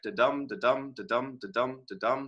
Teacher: the second half of the foot has more stress than the first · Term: relative stress